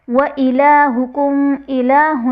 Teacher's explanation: لام پر کھڑا زبر ہے جو کہ الف مدہ کے قائم مقام ہے، اور حرف مدہ کو ایک الف یعنی 2 حرکات کے برابر کھینچ کر پڑھتے ہیں۔ وَإِلَٰهُكُمْ میم ساکن کے بعد حرف با اور میم کے علاوہ حمزہ آ رہا ہے، تو یہاں پر اظہار شفوی کا قاعدہ ہوگا، یعنی میم ساکن میں غنہ نہیں کریں گے۔